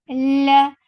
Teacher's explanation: Fatha upon jaws attached with lam. Lam will get sifa of tawassut. La. For fatha upon jaws, the sound is short.